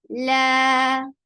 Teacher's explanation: 2 counts long and it is light.